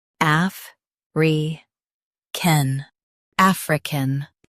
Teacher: Emphasize af and soften ri can.